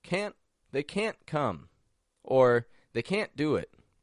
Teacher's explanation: that NT combination at the end of a word can't and the voice kind of raises up a little bit in Pitch doesn't it and the N is cut short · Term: stop T